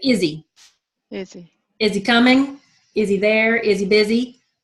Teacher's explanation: in the phrase, is he, we change the S to a Z and we drop the H. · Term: linking